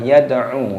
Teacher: yad'u dalnya dibaca sukun dan dibaca qalqalah